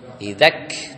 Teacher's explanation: kalau dia sukun putus suaranya, terus anginnya keluar setelah putus suara. Setelah suaranya terputus, terhenti suaranya, angin.